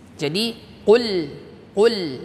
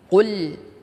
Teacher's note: Ketika sudah masuk huruf lam sukun, tidak lagi dalam keadaan memonyongkan bibir kita.